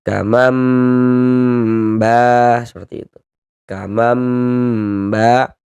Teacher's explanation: kita tahan sejenak suara kita. Kita gunahkan kira-kira sepanjang dua harakat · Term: iqlab